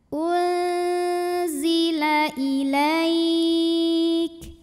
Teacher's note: Karena nun sukun menghadapi zai, maka nun sukun dibunyikan samar-samar, siap-siap menuju zai disertai bunyi dengung. Nah, karena zai ini makhrajnya tidak terlalu dekat, tidak terlalu jauh dari nun, maka bunyi samar dan dengungnya sama. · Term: ikhfa awsat